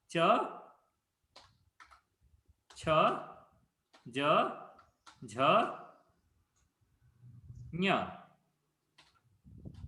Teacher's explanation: The middle of the tongue is touching the top, which is Palate. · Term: talavya